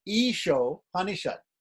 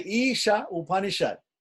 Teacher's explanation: title of the book is isha and upanishad put together and when the a which ends isha and the u which begins upanishad come together they change to become an o